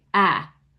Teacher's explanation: when I said narrow, I pronounced that A as a short A, ah. Most Americans now say narrow.